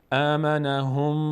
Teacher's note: میم تشدید داره، مقدار در هنگام تلفظشون صدا رو به بینی میاندازیم و توقف میکنیم، اینو بهش میگیم غنه. · مقداری روش وای میستیم و صدا از بینی ادا میشه